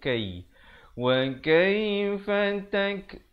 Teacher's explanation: Ada hamasnya di situ, bunyi anginnya.